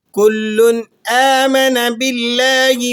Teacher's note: کل تنوین کو آپ نے جو ہے اظہار کے ساتھ ادا کرنا ہے۔ حمزہ پر کھڑا زبر ہے، 1 الف تک کھینچ لیں گے۔